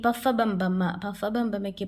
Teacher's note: ചുണ്ടുകൊണ്ട് പറയുന്നവയ്ക്ക് പറയുന്ന പേരാണ് ഓഷ്ട്യം